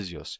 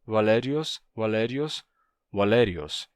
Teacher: passou por um rotacismo em que esse som de z se tornou um som de R assim alios se tornou valerios Tá então vamos vamos lá o